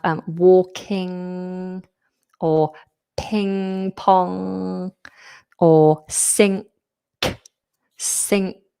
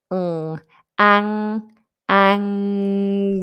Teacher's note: we're using the um sound which is characterized with the back of the tongue high. That's the feature of this.